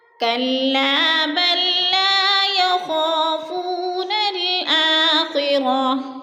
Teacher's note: الف خالی سے پہلے لام کے اوپر زبر ہے تو الف مدہ کو ہم نے ایک الف دو حرکات کے برابر کھینچ کر پڑھنا ہے